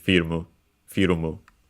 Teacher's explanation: it's accent on the first syllable